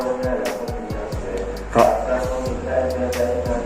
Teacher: lidah bergetar saat mengucapkan huruf, namun tidak berlebihan apabila sampai terucap lebih dari 1 huruf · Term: takrir